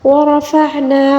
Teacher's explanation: را کو پر پڑھیں گے اور عین کو حلق کے درمیانی حصے سے ادا کریں گے، لَكَ ذِكْرَكَ، اب دیکھیں ذِكْرَكَ، زال کو بالکل نرمی سے پڑھیں گے اور را کو پر پڑھیں گے، اور وقف میں اور جو ہے ساکن آئے گا، ٹھیک ہے۔